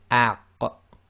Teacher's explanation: You try to say the beginning of the sound and then you block the throat, so it's aq. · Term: qaf